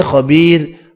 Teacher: را ساکن سے پہلے یا ساکن ہے، را کو باریک پڑھیں گے